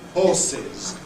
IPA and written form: ˈhɔːsɪz (horses)